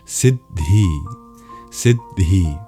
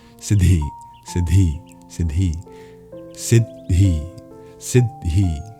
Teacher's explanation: you really do pronounce each D. And in effect, it works out to a slight pause between the syllables.